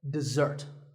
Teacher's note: the first syllable is D and the second starts with a z sound we stress the second syllable